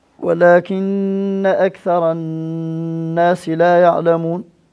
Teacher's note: هذه النون فيها غنة أيضا نون مشددة فيها غنة